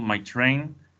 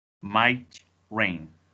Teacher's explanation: we have the juncture after my so we have my train and this case we have might the juncture is after the T so it's might rain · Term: open juncture